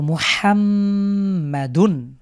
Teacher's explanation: আমরা মিমের উপরে গুন্না করে পড়বো